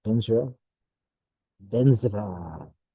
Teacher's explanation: Vajra is pronounced Benza or Benzra. There's a little bit of R after the Z.